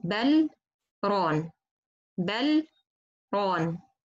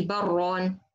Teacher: I stop between the lam and the ra. I pass between them for a second without taking any breath. So I stop in, or I pass in letter lam for a second, and I don't take any breath between. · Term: sakt